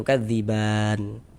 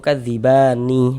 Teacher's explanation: Mad tabi'i bertemu dengan huruf yang disukunkan sebab kita berwaqaf, maka dia berubah menjadi mad arid li sukun. Panjangnya mad arid li sukun itu boleh dibaca dengan panjang 2 harokat atau 4 harokat atau 6 harokat.